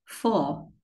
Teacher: cũng cong lưỡi thôi, nhưng mà âm u nó ngắn hơn, nó không rõ âm u, nó bị bẹt cái âm u ra ha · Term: âm u ngắn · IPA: /ʊ/